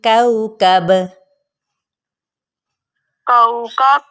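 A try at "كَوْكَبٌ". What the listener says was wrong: कौकबुन बा दो पेशबुन है ना,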